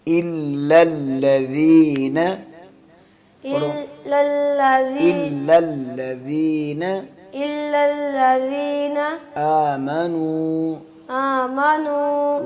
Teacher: آمنو حمزہ پڑھنا ہے, اس کو عین نہیں پڑھنا